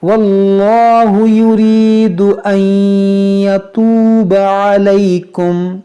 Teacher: نون ساکن کے بعد یا ہے تو یہاں پر ادغام کریں گے